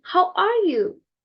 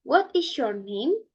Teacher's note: the tone at the end of the sentence are a drop or a fall